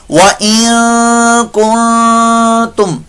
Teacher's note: آگے وَإِن كُنتُم، دو غنّے ہو رہے ہیں اخفا کے. نون ساکن کے بعد کاف آ گیا، آگے پھر نون ساکن اس کے بعد تا آیا تو یہاں بھی غنہ ہو رہا ہے. ٹھیک ہے، دو غنّے یہاں پر اخفا کے ہم کریں گے.